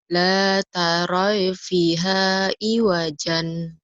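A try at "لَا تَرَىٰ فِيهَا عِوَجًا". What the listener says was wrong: La taro bukan taroy, ya-nya nggak dibaca. taro fi ya-nya nggak dianggap di situ. Yang panjangnya.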